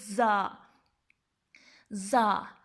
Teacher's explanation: اس کو سیٹی کی آواز سے پڑھتے ہیں ہم لوگ